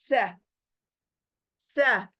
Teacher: इसको अदा करने के लिए जबान बाहर आएगी थोड़ा, और ऊपर के जो दांत हैं सामने के, उसके नोक जो है कट, उसका कट जो है दांतों का, उस कट को हमारी जबान चिपकेगी, यानी लगेगी। सह, यानी आप जबान निकालोगे, जबान चौड़ी होगी, बाहर बहुत चौड़ी होगी, ब्रॉड होगी, और ऊपर के दांतों को लगेगी, किनारों को लगेगी।